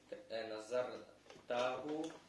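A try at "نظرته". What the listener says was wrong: Надарта, не таху, а просто надарта.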